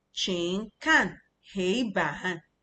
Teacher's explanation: Hei is the first tone.